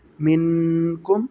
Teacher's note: میم، نون، زیر من، کاف، حروف اخفا میں سے ہے کاف، ٹھیک ہے جی۔ تو یہاں پر ہم غنہ کریں گے۔ من، آگے کاف میم پیش کم، من کم۔